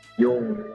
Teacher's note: menyamarkan huruf nun menjadi huruf ang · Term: ikhfa